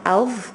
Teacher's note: And here you have alv, which again you have the teeth sign showing that that letter has to be said with the tongue touching, the tip of the tongue touching the teeth, the two front teeth